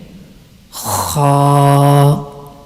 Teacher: And now the Mkhraj of letter Kha. Kha is pronounced from the top of the throat, which is nearest to the mouth.